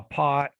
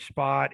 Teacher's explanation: the p has two different ways of doing it we can aspirate it or we don't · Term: aspirated and unaspirated p